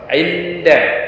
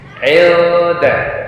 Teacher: harus ikhfa, samar, nunnya disamarkan dan juga didengungkan